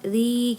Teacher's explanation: TII karena ada kasrah pada huruf zza pada huruf Zai ya bertemu dengan Ya Sukun jadi dia dibaca Dua harakat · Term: Mad TII, mad tabi'i